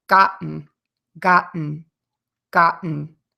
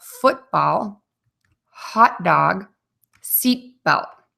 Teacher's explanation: the back of your top front teeth but here's the difference you do not move your tongue you hold it there no air will puff out of your mouth and you're going to stop the air in your throat